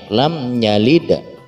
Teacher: Tidak ada degungan, tidak ada penyamar-nyamaran, tetapi langsung saja jelas membaca mimnya. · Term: izhar syafawi